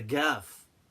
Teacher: some people pronounce the qaf as a gaf, like in Saudi and the Gulf